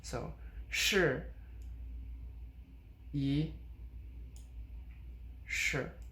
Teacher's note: the e becomes second tone because we're using a fourth tone after that